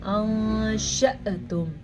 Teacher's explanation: ایک چیز کا خاص خیال رکھیں، جب حمزہ کے اوپر اس طرح کا ساکن آ جائے تو وہاں پہ ہلکا سا جھٹکا پیدا ہوتا ہے. اگر ہم جھٹکے کے بغیر پڑھیں گے تو وہ تو پھر الف بن جائے گا